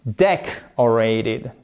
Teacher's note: ce O, il est prononcé comme un E atténué